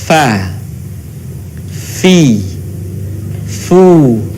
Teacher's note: keluar dengan menyentuhkan ujung dua gigi seri bagian atas dengan bibir bawah bagian dalam diucapkan dengan mengalirkan suara sekaligus dengan udaranya dengan lembut